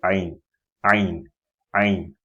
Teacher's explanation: It comes from the middle of the throat